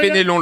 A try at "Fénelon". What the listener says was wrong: Fénelon, pas Il n'y a pas d'accent. C'est Fénelon.